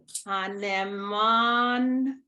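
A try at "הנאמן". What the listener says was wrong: You left out the middle syllable. Hane'eman.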